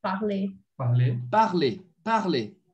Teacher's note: Então, o R sempre mudo, tá? Mesmo estando no infinitivo, tá?